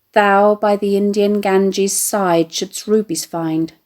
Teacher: putting the stress on the personal pronoun thou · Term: trochee